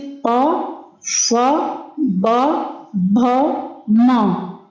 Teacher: ओष्ठ व्यंजन यानी होठों का प्रयोग, जिसमें ओष्ठ मीन्स होता है होठों का प्रयोग।